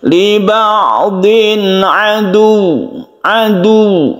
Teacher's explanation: cara membacanya itu bukan dipanjangkan tapi ditekan ditabrakkan kepada huruf wau liba'din adu adu seperti itu ya kita tekan kepada huruf wau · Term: ditasdidkan